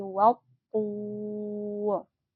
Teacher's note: Kemudian huruf to adalah huruf isti'la, jadi bacanya harus tebal ya, bukan watur tapi wautur. Tur harus kita panjangkan dulu karena ini termasuk mad arid li sukun ya, panjangnya 5 sampai 6 harokat.